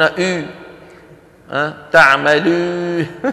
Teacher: إخواننا الأتراك يخلطون الواو بالياء فيقولون أو تعملوا، فهذه الواو مخلوطة بالياء، والواو العربية لا خلط بينها وبين الياء.